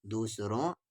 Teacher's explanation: دا کے ساتھ او والی واو، دوس، را کے ساتھ او والی واو، نون غنہ، دوسروں، نون غنہ آواز کو ناک میں لے جائے گا